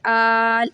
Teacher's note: لام ساکن ہو جائے گا، تو ہم کھڑا زبر کو 5 سیکنڈ کے برابر کھینچیں گے، 3 سے 5 سیکنڈ کے لیے.